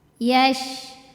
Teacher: Shin itu keluarnya dari tengah lidah ke langit-langit di atasnya, langit-langit tengah. Dan ada suara angin menyebar di dalam mulut kita.